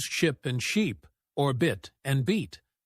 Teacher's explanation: The difference is in how long you hold the vowel sound.